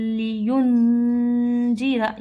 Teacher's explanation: क़य्यिमल लियुनज़िरा, यहाँ नून साकीन आ गया और नून साकीन के बाद हुरूफ इख्फा में से जाल आया है, तो यहाँ हम गुन्ना करेंगे। · यहाँ जो ये लाम है ये हुरूफ यरमलून में से है, तो हम इसको नून साकीन की और तनवीन की आवाज़ को लाम में कन्वर्ट करके हम पढ़ेंगे